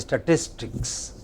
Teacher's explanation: the main stress is on statis